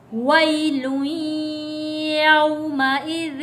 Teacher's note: یا ساکن سے پہلے زبر ہے، حروف لین ہے، جلدی اور نرمی کے ساتھ ادا کریں گے